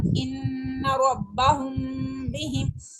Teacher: چونکہ میم کے آگے با آ گیا ہے تو اس وجہ سے ہم یہاں پہ غنہ کر رہے ہیں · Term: اخفاء شفی